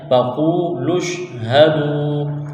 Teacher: شین کے ساتھ ملانا ہے، فَقُولُوا اشْهَدُوا واو مدہ ہے ایک الف کے برابر کھینچنا ہے